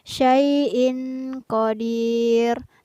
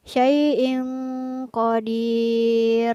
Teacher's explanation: artinya tanwinnya tidak terbaca jelas atau dibaca samar karena bertemu dengan huruf qaf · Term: ikhfa